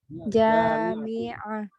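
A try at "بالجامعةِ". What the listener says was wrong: Bil jami'ati. Pakai harokat akhir dulu aja.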